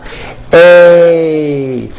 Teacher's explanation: Notice how my mouth also closes a little bit at the end of the vowel.